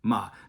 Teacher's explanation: this is a fourth tone falling tone